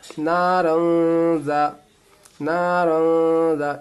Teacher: را الف دو زبر رن، نارن، یہ الف نہیں پڑھائے گا، آگے حروف اخفا کا یہ زال ہے، دیکھیں حروف اخفا میں سے زال آ گیا، ناک میں آواز کو رکھیں